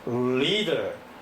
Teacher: 그러니까 파닉스적인 접근을 하면 그냥 흉내를 내고 마는데, 포널러지적인 접근을 하게 되면 L 발음은 을 해서 혀끝이 입천장에 딱 닿습니다. 그래서 혀끝이 입천장에 닿으니까 소리가 혀 옆으로 이렇게 소리가 나오겠죠. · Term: 설치음